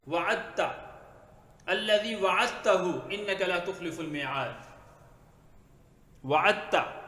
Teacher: اب تا کو تا کر دیا تو بن جائے گا وعدتا، یہ دال سائلنٹ ہوگی، لکھنے میں آئے گی پڑھنے میں نہیں آئے گی